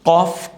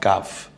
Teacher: এই কফটা কণ্ঠনালী জিহ্বার গোড়া থেকে উচ্চারিত হয় কফ, আর জিহ্বার গোড়ার কিছু উপর থেকে উচ্চারিত হয় কাফ